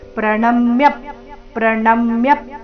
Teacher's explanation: ಪ್ರಣ ಮೇಲೆ ಆಘಾತ ಯ ಮೇಲೆ ಸಹ ಆಘಾತ ಬರಬೇಕು